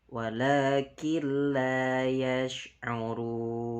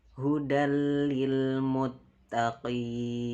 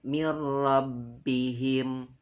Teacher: maka macana kudu diidghamkeun. Tapi henteu meunang make gunnah. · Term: idgham bila gunnah